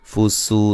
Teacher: سین کو باریک سیٹی سے اور واو مدہ ہے